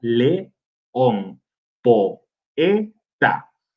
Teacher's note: En el caso de los hiatos, que son dos vocales en sílabas, que forman sílabas separadas o sílabas diferentes, hay varios casos. Está el de dos vocales abiertas, por ejemplo, león, poeta, que forman sílabas separadas